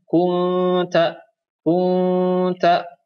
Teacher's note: nun sukun bertemu dengan huruf ta, dibacanya samar. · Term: ikhfa